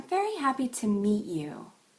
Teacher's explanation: very happy and meet are all stressed therefore you're going to get longer and louder on them meet at the end of the phrase gets the longest dress